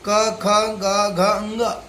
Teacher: इन सबों का अ आ क ख ग घ अंग और विसर्ग का उच्चारण स्थान कंठ है